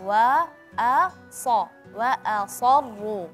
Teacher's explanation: wau dan hamzah tipis Shad tebal ro tebal ya